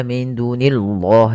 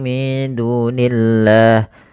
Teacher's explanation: pada lafal Allah ketika dia didahului dengan kasrah tidak boleh dibaca tebal lamnya.